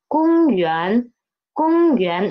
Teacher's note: the first tone is still the highest, and the second tone is rising up. It rises from the 2 to the 5th, to the 4th.